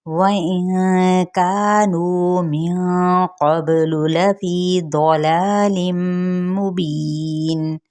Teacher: واو ہونٹوں کی ناتمام گلائی کے ساتھ، یہاں پہ نون پہ اخفاء حقیقی، کانو کا پہ مد اصلی بالالف کا قاعدہ اور نو پہ مد اصلی بالواو کا قاعدہ، یعنی ایک الف یا دو حرکات کے برابر کھینچیں گے۔